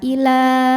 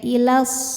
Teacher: Jika berhenti panjang dua harakat ila tapi kalau washol jadi pendek ilas gugur madnya namanya takholus bil hadzfi.